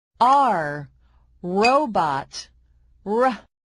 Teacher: The R sound is called the alveolar approximant, which means that you put your throat near of the roof of your mouth and voice out. The R sound is made through the mouth and is voiced. This means you use your vocal cord.